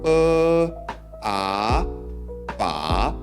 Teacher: At first, the pitch goes downward and then makes an upward turn just like its symbol. · You could compare the difference with the first tone and you'll see that the combination sound pitch is rising upward. The third tone is slightly more complicated since it has both upward and downward pitches in the same tone.